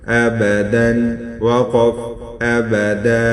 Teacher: یعنی یہ 2 زبر جو ہے یہ وقف کی حالت میں الف کو تبدیل ہوگا